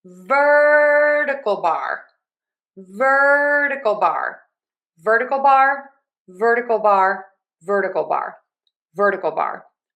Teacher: So we are going to stress syllable number one in ver